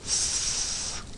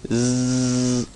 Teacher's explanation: the difference between s and Z is that one is not voiced while the other is